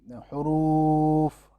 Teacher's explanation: میں نے واو کو آگے کھینچا ہے تو یہ آواز نکلتی رہی ہے، رکی نہیں ہے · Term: صائت